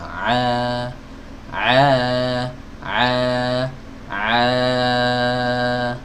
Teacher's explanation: huruf Ain itu keluarnya nyampe aja keluar dari tenggorokan bagian tengah